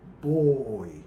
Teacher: nós temos o o e o i na mesma sílaba Então a gente tem um ditongo tá dentre os quais o o vai fazer o papel de · O O, ele é mais longo, então ele é base da sílaba e por isso ele vai ser caracterizado como uma vogal e o I como uma semivogal.